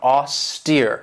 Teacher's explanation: this has two syllables and the stress is on that second syllable with that long e sound